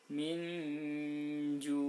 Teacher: nunnya tetap dibaca terang tapi separuh saja, kemudian langsung disamarkan. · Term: ikhfa hakiki